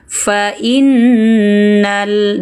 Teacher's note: Fa innal, nun bertasdid dengungkan. Fa innal, dengung, tekan, tahan, pendek. Pendek saja, jangan panjang lagi ya. Langsung kejar huruf lam sukun di sini.